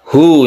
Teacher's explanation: Ini dibaca panjang satu alif, kita sebut hukumnya itu mad silah qasirah. Mad silah qasirah itu dia dibaca panjang apabila diapit oleh dua huruf hidup, ada lam, ada zal.